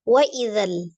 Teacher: Maka tidak jadi panjang, alifnya dianggap tidak ada, langsung disukunkan ke dalam huruf lam.